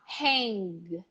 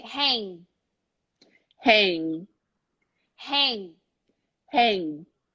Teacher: it hang evening and kay now pay attention it's not Hank you are almost going to pronounce the G but you're gonna stop before it comes out